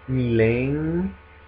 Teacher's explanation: Attenzione anche a milenge, ci incontreremo, perché la E non è seguita da una vera e propria N, quindi non è milenge, non è milenge, ma è milenge. En, è un suono nasale, proprio simile ai suoni nasali che esistono in francese o in portoghese